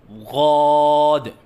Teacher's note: بعض بچے ضاد کی ادائیگی کے وقت درمیان میں غین کا اضافہ کرتے ہیں، یہ غلط ہے